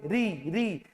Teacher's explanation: ऋषि का री देखो तालु से थोड़ा आगे है। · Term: मूर्धन्य